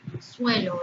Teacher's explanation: Suelo es la unión de una vocal U átona con una vocal abierta E. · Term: diptongo